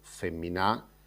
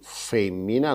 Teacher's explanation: penultima, non bollidi accento per uno. Femmina, parzitura in sillabas, femina, est un fueddu a tre sillabas, non est accentau s'ultima sillaba